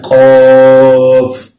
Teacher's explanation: قاف جب آپ نے پڑھنا ہے 2 نقطوں والا، اس کو موٹا قاف بھی کہتے ہیں، اس کو آپ نے زبان کی جڑ کو اپنے تالو کے ساتھ لگا کے تو پھر اس کو پڑھنا ہے قاف، ایسے پورا منہ کھول کے۔